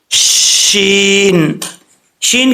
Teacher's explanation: زبان کا درمیان اوپر والے تالو سے لگے تو شین پڑھا جاتا ہے